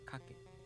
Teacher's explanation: kaku turns into kake, so the accent falls on ka.